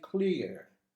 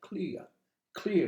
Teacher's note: i don't pronounce the final r